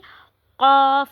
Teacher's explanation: मोटा करके पढ़ना है। जुबान की जो जड़ है जब कौवे के करीब नरम तालू से लगेगी तो वहां से कौफ अदा होगा। जहां से हम ख अदा करते हैं ना उसी के पास से इसको हमने कौफ को अदा करना है।